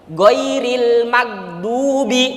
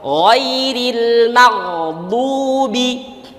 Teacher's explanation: tapi kalau Gin Arab lebih dalam lagi di mana Di adnal halqi tenggorokan bagian atas